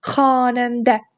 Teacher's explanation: A saiti birinci hecədə uzanır. Sonuncu hecədə olan ə saitin üzərinə isə vurğu düşür.